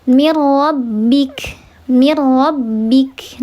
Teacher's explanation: Karena ada nun sukun ketemu huruf ro, maka dia dibacanya dileburkan saja, tidak dibaca ghunah. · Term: idgham billah ghunah